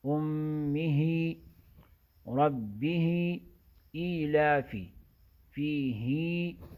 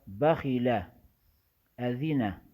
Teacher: کڑی زیر کی آواز کو کم نہیں کریں گے اور پڑی زیر کی آواز کو لمبی نہیں کریں گے